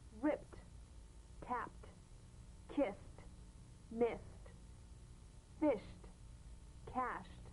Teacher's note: easy endings that are really pronounced as T first an unvoiced group flipped tapped kissed miss fists cashed and